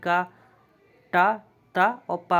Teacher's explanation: दो अंग आपस में मिल जाते हैं तो जब उनको स्पर्श करके हवा निकलती है तो वो आपके स्पर्श व्यंजन कहलाते हैं